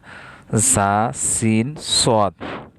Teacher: জিব্বার আগা সামনের নিচের 2 দাঁতের পেট এর আগার সঙ্গে লাগাইয়া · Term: 8 নম্বর মাখরাজ